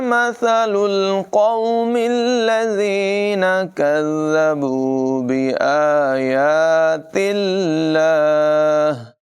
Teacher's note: یہاں لفظ اللہ کو باریک پڑھیں گے، وقف کی صورت میں آخر میں ہا کی آواز نمایاں ہوگی